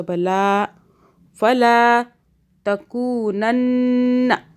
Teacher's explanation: لام کو کھینچا کیونکہ اس لام کے اندر الف ہے